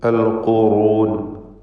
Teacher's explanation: ഇസ്തിഅലാൻ്റെ ഹർഫാണ്. ദമ്മ ആയതുകൊണ്ട് നിസ്ബിയ തഫ്ഖീം അഥവാ മൂന്നാമത്തെ ലെവലിലുള്ള തടിപ്പിക്കൽ തഫ്ഖീം നൽകി.